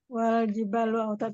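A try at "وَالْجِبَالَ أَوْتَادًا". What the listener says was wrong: Ya, awas. Jibalu atau jibala? Lihat hurufnya. Enggak. Lu atau la. Jibalu, jibala, jibali itu harokat akhirnya itu irobnya.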